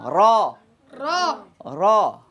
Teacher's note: মুখ খুলে যাবে কিন্তু ঠোঁট গোল হবে না